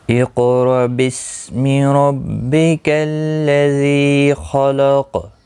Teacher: حمزہ ساکن کو جھٹکے کے ساتھ پڑھا جائے گا